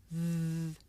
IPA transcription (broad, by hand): ð